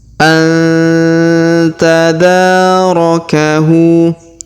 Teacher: Laula antadarakahu. Perhatikan huruf nun sukun bertemu ta, maka kita dengungkan dan kita samarkan